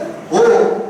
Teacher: இப்ப அது எப்படி ஓவாச்சு? நான் வாயை குவிச்சேன்